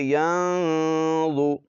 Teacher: نون کی آواز کو ناک میں چھپائیں گے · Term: اخفا